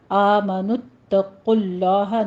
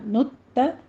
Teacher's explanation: تا کو باریک پڑھنا ہے، اس کے اوپر تشدید ہے، سختی کیجیے۔ آمنوا اتقوا اللہ، نت نہیں کہنا، نت، تا باریک رکھیے گا، آگے قوف کو پر پڑھنا ہے، آگے لفظ جلالہ بھی پر پڑھنا ہے۔